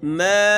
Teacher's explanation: سما، سین کو سیٹی کی آواز نکالنی ہے، میم کے اوپر مد کرنا ہے، اس کو کھینچنا ہے۔ ما، 5 سے 6 الف اس کو کھینچنا ہے